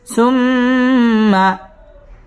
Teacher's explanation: সুম্মা ওয়াজিব গুন্না, এখানে গুন্নাহ করে পড়তে হবে।